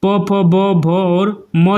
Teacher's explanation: ओष्ठ से प फ ब भ और म जो है वह शब्द बोले जाते हैं